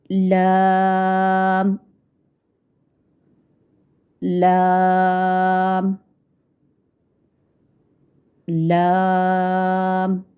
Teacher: आप इसकी ज़बान के बारीक किनारे को आप ऊपर वाले दांतों के मसूड़ों से लगाकर बारीक आवाज़ में अदा करते हैं।